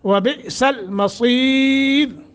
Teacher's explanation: جھٹکا دے کے پڑھیں گے، حمزہ ساکن ہے